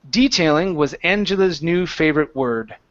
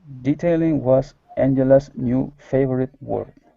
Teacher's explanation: we put the stress at the very beginning